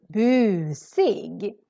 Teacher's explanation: so here the u is really long because we're just one consonant coming after it